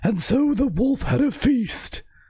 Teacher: Yeah, it's that it takes a lot of air. It's a very, very breathy voice.